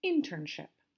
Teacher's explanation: this one also has 3 syllables, internship. And the stress is on the first syllable.